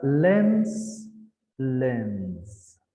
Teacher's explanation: Because n is a voiced sound, so s becomes za, not sa.